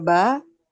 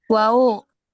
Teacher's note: Asyafatain itu artinya dua bibir ya. Dua bibir.